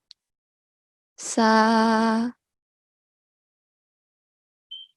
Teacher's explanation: for sa, it's touching the lower front 2 teeth